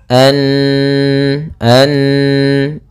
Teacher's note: biasa ada mengenal sabdu misalkan maka Apabila ada nunharakat tasydid maka ia dibaca dengan bacaan gunah gunah yaitu menahan suaranya